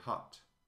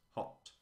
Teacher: in received pronunciation uh you round on the word hot